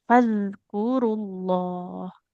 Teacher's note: ujung lidahnya nempel ke ujung gigi seri atas. Keluar sedikit lidahnya. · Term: zal